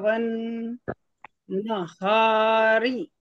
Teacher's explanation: واو کو نون سے ملائیں گے، یہاں شمشی کا قاعدہ ہوگا، الف اور لام کو چھوڑ دیں گے، نون کو دوبارہ پڑھیں گے، تشدید شدت کے ساتھ پڑھا جائے گا